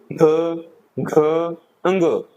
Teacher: हमारा जो है स्वर है वो भी गूंज रहा है यानी कि गूंज पैदा हो रही है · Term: सघोष